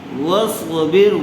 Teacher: صاد کو اچھی طرح سے پر کیجیے، واصبر، واصبر نہیں پڑھیں گے اس کو ورنہ تو صاد کا سین بن جائے گا۔